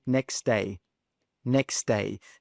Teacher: As you can see, that's a bit hard to say if we say next day and we really pronounce that T sound. So instead of pronouncing that T sound, we simply drop it. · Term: elision